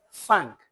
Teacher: Wannan ana kiran shi interdental sound wato harshe wannan sound ne da ake fita shi tsakanin harshe da haƙori